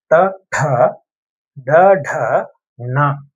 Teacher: ச ஜ ஜ ஞ அடுத்து ட வரிசை மூர்தன்ன்னு சொல்லுவாங்க. மூர்த அப்படின்னா நாக்க நல்லா மடிச்சு மேலினத்தோட பின்பகுதியை தொடணும்